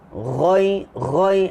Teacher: Ghain ni dia dekat dengan huruf kha, tapi kha ni lagi atas, dia bawah sikit. Ghain ni bawah sikit daripada kha. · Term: huruf ghain